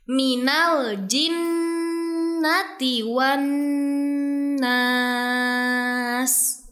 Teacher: Dan yang terakhir, dalam ayat 6 surah An-Nas terdapat ayat yang berbunyi minal jinnati wan nas. Terdapat 2 huruf nun yang bertasydid, sehingga dua-duanya harus dibaca gunnah 2-3 harokat.